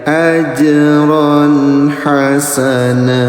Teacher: Jim sukun warnanya warna ungu namanya qalqalah, pantulkan